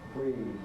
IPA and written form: briːðd (breathed)